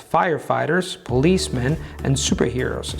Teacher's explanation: the tone going up on firefighters policemen and then the tone falling down on the stressed syllable of the last element